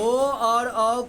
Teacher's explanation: ओ द कंठो। ओ और औ का उच्चारण कंठ और ओष्ठ से होगा।